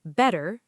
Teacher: In American English, a T sound between two vowels often turns into a quick, soft D sound. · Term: flap T